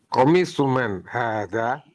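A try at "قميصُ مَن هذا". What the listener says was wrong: salah. Ada ya-nya kan?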